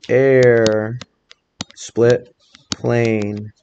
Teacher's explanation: i hear that long a in the second syllable really clear